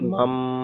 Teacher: নুন সাকিনের পরে বা এসেছে, তাই নুন সাকিনকে মিমের দ্বারাই পরিবর্তন করে একালিপ পরিমাণ গণনা করে পড়তে হবে। একে একে ইকলাব বলা হয়, ইকলাব বলা হয়।